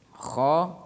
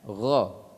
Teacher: Kho itu sama tempat keluarnya dengan ghoin